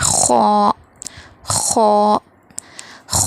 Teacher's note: خو ادا ہوتا ہے حلق کے ابتدائی حصے سے، شروع حصے سے خو ادا ہوتا ہے، اس کو تھوڑا موٹا بھی پڑھیں گے